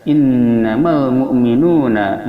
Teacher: ada wawu, sebelumnya ada dhamma, ini adalah mad asli, panjangnya dua harakat